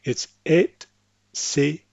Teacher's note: This is not pronounced like some Americans and maybe some other English speakers would pronounce it with an X sound.